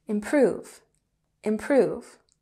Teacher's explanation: And improve has emphasis on the second syllable.